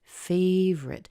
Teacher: anytime you talk about something that's your favorite, you don't hear the O in there